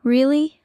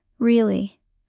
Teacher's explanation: really, high pitch surprise. Really, low pitch serious. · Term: intonation